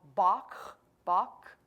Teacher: it's almost a roll at the back of your throat you almost have to make something move back there like you're clearing your throat